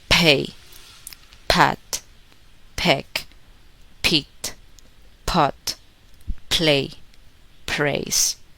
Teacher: Don't make a vocal sound. At the beginning of words, release p with a puff of air.